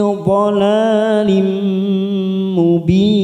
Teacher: Lim kasroh tanwin bertemu mim lim namanya bacaan idgham bi gunnah. Lim kita tekan 3 ketuk siap masuk kata huruf mim. Lim mubin mat arid li sukun 4 harakat kita panjangkan kita samakan dengan mat arid li sukun sebelumnya.